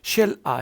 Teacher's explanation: You will give stress to I.